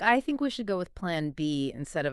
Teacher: ending declarative statements with a rising inflection. So, they sound like questions even when they're not. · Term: uptalk